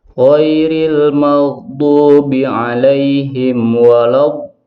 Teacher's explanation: sifat istitolah atau memanjangkan suara. Ini terdapat pada huruf dod. Ketika dod itu bertasydid ataupun sukun.